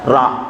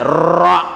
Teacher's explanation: ra itu memiliki sifat takrir. Takrir itu harus digerakkan roknya itu, lidahnya itu 2-3 kali gerakan ya.